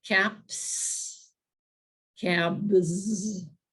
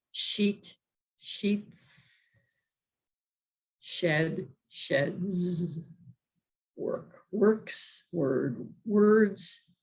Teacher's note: the reason that the sound changes is because of the preceding consonant and whether it's voiced or unvoiced